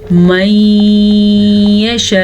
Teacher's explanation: نون ساکن کے بعد یا آیا ہوا ہے تو ان دونوں کو آپس میں غنے کے ساتھ ملا کے پڑھیں گے · پھر جب بھی مد آ جائے اور مد کے بعد حمزہ آ جائے اور وقف بھی آ جائے تو جھٹکے کے ساتھ رکیں گے، حمزہ جھٹکے کے ساتھ ادا ہوگا لیکن زبر زیر پیش کے ساتھ ادا نہیں ہوگا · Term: ادغام بالغنہ